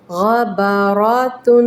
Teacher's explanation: تنوین کو لمبا کریں، غنے کو لمبا کریں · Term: غنہ